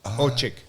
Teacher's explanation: C-S-I-K, yeah. The C-S is ch sound, and it's because it's Hungarian.